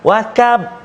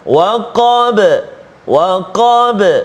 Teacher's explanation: huruf qaf berikan hak dia, sifat dia kan tebal, isti'la sebagainya, iaitu jangan baca tipis dengan macam kaf